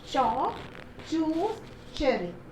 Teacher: affricates are combining t and sh to become ch